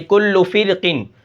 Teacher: ہم اس را کو باریک پڑھتے ہیں